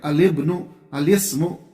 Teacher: اگرچہ عام بول چال میں اس کا خیال کم رکھا جاتا ہے، لیکن اس کا آپ خیال رکھیں کہ جس ٹائم آپ کو جو ہے ابن کے ساتھ الف لام داخل کرنا تو الف لام والا لام جو ہے با کے ساتھ ملا کے پڑھیں گے